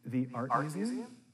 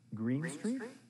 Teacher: The second speaker uses rising intonation to confirm information.